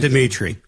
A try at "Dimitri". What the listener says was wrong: What are you doing with the vowel there? Should just be Dimitri. No vowel.